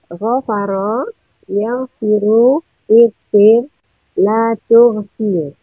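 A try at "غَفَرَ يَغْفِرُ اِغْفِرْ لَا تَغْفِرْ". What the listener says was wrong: Lata, bukan latu. Kalau latu itu mazid.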